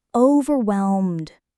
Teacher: Just a gentle landing, and the stress is on whelm.